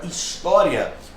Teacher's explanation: A palavra história tem como sílaba tônica o tó, que é uma paroxítona.